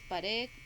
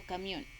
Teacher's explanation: la sílaba tónica es la última